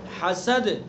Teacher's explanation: ہا کو حلق سے ادا کریں گے